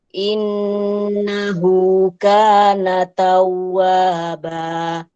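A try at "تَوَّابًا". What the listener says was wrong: Kasih nabar sedikit di huruf wawu. Nabar itu tekanan sedikit ya. Ini nabar itu fungsinya untuk menghindari lin. Biar tidak ada yang membaca tahu seolah-olah ada wawu sukun di sana. Jadi tidak ada wawu sukun, wawunya cuma satu. Tawwaba. Jadi di nabar sedikit untuk memperjelas tasydidnya.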